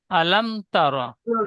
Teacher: আলাম বলে একটু মিমে গুন্না হয়ে যাচ্ছে। মিম সাকিনের পরে বা মিম ছাড়া অন্য তা এসেছে, তাই মিমকে বিনা গুন্নায় মিলিয়ে পড়তে হবে। একে ইজহারে স্বাভাবিক বলে।